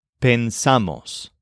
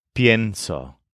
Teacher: Some are going to stress the stem, and so they'll trigger the stem change. Others are going to stress the part after the stem, so they'll just start with pen instead of pien.